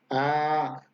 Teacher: Y esta es A. Se alarga el sonido. A. No sube, no baja, es parejo. A. Así tiene que sonar.